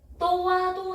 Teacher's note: 우로 시작해서 아로 끝납니다. 자 여기서 우에 여기서 오의 동그라미 우의 동그라미 단모음이 반모음으로 바뀐 반모음화.